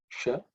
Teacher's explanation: the sha is a cerebral sha, so sha, the tongue should be pointing upwards